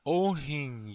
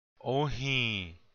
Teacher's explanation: the N seems to have a tail. This means it's nasal. You don't complete the sound of the N. You start to say the N sound, but you don't finish it.